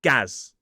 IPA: ɡæz